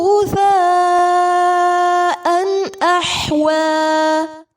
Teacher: آگے مد متصل ہوگا، اسے 5 یا 4 حرکات جتنا لمبا کریں گے. غثاء احوى، تنوین کے بعد حمزہ ہے، اظہار کریں گے، ح وسط حلق سے ادا ہوگا.